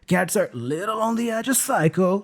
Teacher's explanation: the preposition of there again gets reduced to a schwa sound